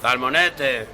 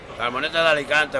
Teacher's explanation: the th sound, if you like, is replacing s, as it happens in some parts of Spain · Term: ceceo